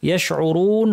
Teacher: শিন জিহ্বার মাঝখান থেকে আওয়াজটা ছড়িয়ে পড়বে, এর বৈশিষ্ট্যের নাম তাফাশি, এর কারণে একটা স্ট্রং আওয়াজ শোনা যাবে।